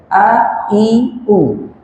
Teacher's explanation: Hamzah itu tempat keluarnya makhrajnya di sini, tenggorokan bagian bawah.